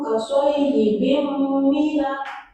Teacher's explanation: Maka tanda tanwin dibaca mendengung atau masuk ke huruf mim. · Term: idgham